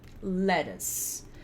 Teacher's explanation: o light L é o som de L na frente da boca. Então, L na frente da boca.